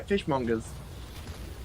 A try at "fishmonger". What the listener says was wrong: Okay, well, you were saying fishmonger. No, it's fishmonger. Like, emphasize the GER, not fishmonger. Fishmonger. See, you're making the ER sound like a fucking A.